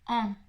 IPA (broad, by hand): ɑ̃